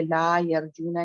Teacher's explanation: تو ٹلٹ نہیں کرنا، فتح کو فتح ہی رکھنا ہے، با تا سا جا آرام سے فتح رکھنا ہے.